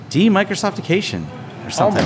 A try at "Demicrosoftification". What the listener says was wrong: Almost. You missed a syllable. That's very common.